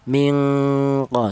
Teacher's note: dengungnya lebih dominan atau lebih kuat daripada samarnya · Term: ik adna